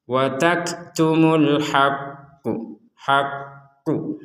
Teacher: sedikit dititekan dan sedikit ada jeda untuk menekan.